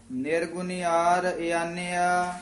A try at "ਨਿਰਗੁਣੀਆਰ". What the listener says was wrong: ਨਿਰਗੁਣਿਆਰ ਨਹੀਂ ਕਹਿਣਾ, ਨਿਰਗੁਣਿਆਰ। ਨੰਨੇ ਦੀ ਬਿਹਾਰੀ ਜਿਹੜੀ ਹੈ ਦੀਰਘ ਲਾ ਕੇ ਬੋਲਣੀ ਆ, ਆਮ ਨਿਰਗੁਣਿਆਰ ਹੀ ਕਹਿ ਜਾਂਦੀ।